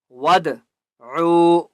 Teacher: بسورتم مم مثلہ، وَادْعُوا، دال کے اوپر قلقلہ کریں گے، ٹھیک ہے؟ وَادْعُوا، واو مد ہے، عین کو ایک الف کی مقدار کھینچ کر پڑھیں گے